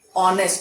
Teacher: We say honest because H is silent. So though this word begins with H, the first sound that comes out of a mouth is of O